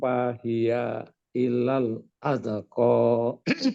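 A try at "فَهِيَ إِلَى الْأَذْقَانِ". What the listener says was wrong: Nah, di situ jangan mantul, Jangan tahan dia. Wa ilal azqani. I bawah.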